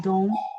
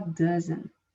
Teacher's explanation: Pode ser, a gente pode falar don't e a gente pode falar doesn't, parando antes do T